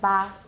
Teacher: This should be just ba. It's not ejective, it's not voiced.